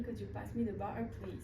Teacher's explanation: the use of the glottal stop, where the T sound is replaced with a slight closure of the throat